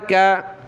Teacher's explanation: یہ چھوٹی کاف کہلاتی ہے، اس کو باریک کر کے پڑھتے ہیں، پتلا کر کے